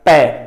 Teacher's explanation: साडे बुल हन भाव होंठ वो जुड़ते हैं आपस विच ते वापस वख होण ते ही पै दा उचारण हुंदा है। इस तो अलावा पै दा उचारण असी होर किसी तरीके नाल कर भी नहीं सकते।